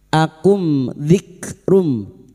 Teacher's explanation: Mim sukun dibaca jelas tanpa mendengung. Mim sukun mendengung hanya bertemu dengan dua huruf, yaitu huruf ba dan huruf mim. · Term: izhar syafawi